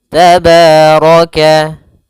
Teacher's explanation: ro-nya dibaca tebal karena dia ro berharakat fathah